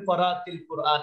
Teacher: বলতে হবে করাতিল কুরআন এটার কারণ হলো এখানে সুকুন এখানে সুকুন দুই সুকুন পাশাপাশি থাকলে পড়া যায় না তখন কি করতে হয় প্রথম সুকুনটা জের দিয়ে পড়তে হয়